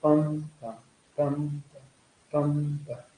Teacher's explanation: the first syllable is not a stress, and the second syllable is a stress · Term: iambic pentameter